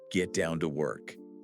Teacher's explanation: You rush through those middle words to hit the strong beat on work.